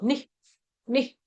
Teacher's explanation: नी के आगे जो विसर्ग है उसका उच्चारण आधा ह होगा